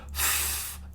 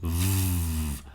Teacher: So if you can make the F noise and say f, but then you add the vocals, you add the voice, the vibration in your throat. So you go from a f to a v, and then you can say ferry and very.